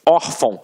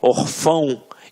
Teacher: a sílaba tônica está na penúltima sílaba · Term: paroxítona